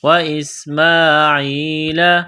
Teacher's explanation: ہیم، و اسماعیل، سین میں سیٹی کی آواز پیدا کرنی ہے، میم کو ایک الف کے لیمٹ میں کھینچنا ہے